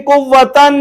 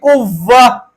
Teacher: گول تا کو وقف میں ہاں میں بدل دیں گے